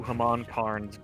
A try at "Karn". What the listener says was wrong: Maharaja Karn. So it's Khan, not Karn. It's Khan. There is an R, but Khan.